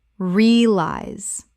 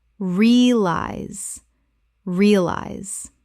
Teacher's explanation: Correct pronunciation, realize. Two syllables in natural speech, the middle syllable collapses entirely.